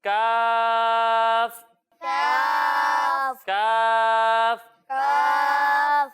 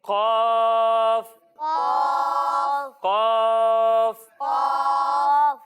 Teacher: جب ہم کاف کی ادائیگی کریں گے تو اسے باریک پڑھیں گے اور جب ہم قوف کی ادائیگی کریں گے تو آپ کو یہ یاد ہوگا کہ قوف حروف مستعلیہ میں سے ہے، یعنی ان حروف میں سے ہے جن کو موٹا پڑھنا ضروری ہے.